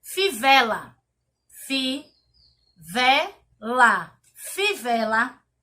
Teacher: Fivela tem como a sílaba tônica o vé. Fivela. O vé, ela não está no final da palavra e nem está no início.